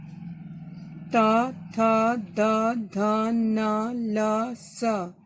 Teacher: दंत, दांतों से बोलते हैं